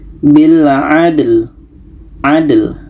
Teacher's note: dal ini qalqalah, ada pantulan